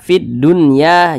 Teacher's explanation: karena dia izhar maka dibaca jelas, tidak berdengung